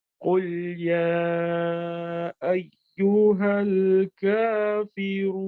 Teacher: रून 4 हरकत के बराबर इसको मद दिया जाता है, यानी खींचा जाता है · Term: मद आरिद